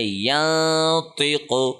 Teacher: ہم نے زبان کہیں پہ ٹچ نہیں کی، نون کو ناک میں پڑھا ہے، چھپا کے پڑھا ہے اور 1 سیکنڈ لمبا کر کے پڑھا ہے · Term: اخفا